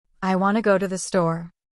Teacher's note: Feel how go and store get more energy? That's English rhythm.